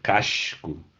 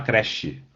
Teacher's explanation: em posição final pós-tônica, o S também, né, faz o fonema X. Por exemplo, no Rio de Janeiro o pessoal fala, sei lá, casco, né, então em posição final de sílaba, e no português de Portugal eles também falam assim, né.